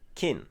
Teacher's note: La syllabe se termine par une consonne sonore, donc elle est vivante. Et enfin, la consonne initiale est moyenne, ce qui nous donne un ton plat.